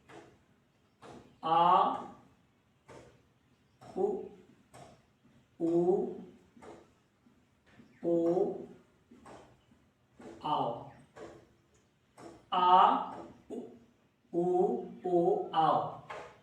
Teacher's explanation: ये जो हमारे स्वर हैं वो जीभ के पश्च भाग से उच्चरित होने वाले वर्ण हैं या स्वर हैं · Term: पश्च स्वर